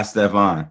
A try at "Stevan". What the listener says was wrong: It's Stevan. But Stevan is a common mispronunciation. They make the E short.